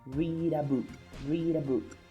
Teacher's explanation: the D is in between vowel and vowel. That's why we are going to pronounce it as read a.